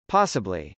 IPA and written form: pˈɑsəbli (possibly)